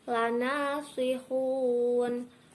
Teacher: hun termasuk bacaan mad arid li sukun, dibaca panjang 2, 4 ataupun 6 harokat. Dibaca mad arid li sukun karena terdapat mad tabi'i dibaca waqaf ataupun di akhir ayat.